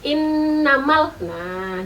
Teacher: kalau ketemu dengan Nun dan mim yang bertasydid itu dengungnya agak lama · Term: ghunnah musyaddadah